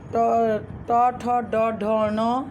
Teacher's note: ट, ठ, ड, ढ, ण, इसका उच्चारण स्थान मूर्धा है